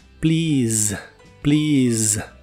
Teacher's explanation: las vocales e y a de en medio se pronuncian como una I larga y el sonido del final es el de la S vibrante como si fuera una Z inglesa